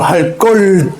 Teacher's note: 관형사형 어미 리을 뒤에 오는 예사소리, 리을 뒤에 오는 예사소리는 된소리로 발음한다.